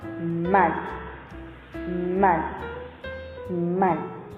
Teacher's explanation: 3 main nasal sounds are M. It's bilabial and made by closing both lips and allowing air to pass through the nose.